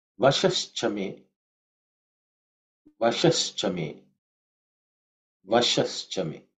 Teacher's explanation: Vashaha is the word. The visarga has become ish due to sandhi.